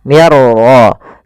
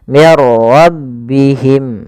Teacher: masukkan nun ya kepada huruf ra sehingga suara nunnya hilang, langsung terbaca dengan jelas suara ra-nya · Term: idgham bila gunnah